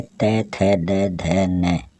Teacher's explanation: त वर्ग में त, थ, द, ध, न, इनको हम उच्चारित करते हैं तो अपनी जो जीभ है वो दांतों के टच होने के कारण इनको दंत वर्ण कहा जाता है